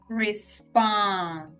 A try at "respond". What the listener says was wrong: This time you didn't pronounce the D. Which, you know, honestly, in spoken, when we're speaking fast, when we have D's after N's, it's very common to drop them. So actually, the way that you said it is more natural.